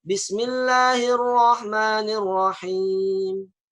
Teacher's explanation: Ro-nya itu harus tebal. Kalau saya baca tipis, Bismillahirrahmanirrahim.